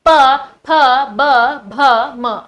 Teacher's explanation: अब ये जो अक्षर हैं आपके, ये होठों द्वारा बोले जाते हैं। भाई होठों का मूवमेंट होता है, आपस में आपके होठ जुड़ते हैं तभी आप ये वर्ग बोल पाएंगे। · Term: औष्ठीय